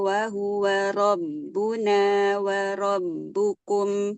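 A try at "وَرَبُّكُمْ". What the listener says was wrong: Tebalkan lagi Mbak di huruf ro. Waro, waro.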